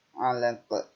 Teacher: Karena diwakofkan maka dipantulkan. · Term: qalqalah kubro